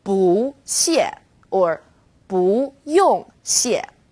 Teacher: When used on its own, 不 is fourth tone, 不. When 不 is used before another fourth tone, it becomes second tone